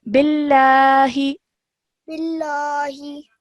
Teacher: this would not be a thick lam. This would be a simple lam because the letter before it has a kasra.